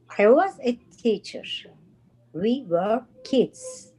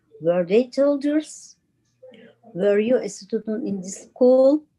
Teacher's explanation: when she's reading the sentence just flat tone and when uh she's reading the question answerable by yes or no Rising intonation